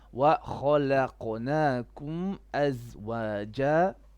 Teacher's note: lam is flat. لا and then qaf is heavy.